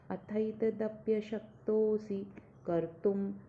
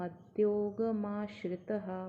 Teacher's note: त के ऊपर जो अनुनासिक है मतलब डॉट है उसका उच्चारण म आएगा क्योंकि अगला वर्ण म है